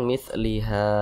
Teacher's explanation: Mad thi'i panjangnya dua harakat atau kira-kira dua ketukan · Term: Mad Thobi'i